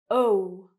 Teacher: my mouth is quite round. It moves and it becomes smaller. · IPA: /əʊ/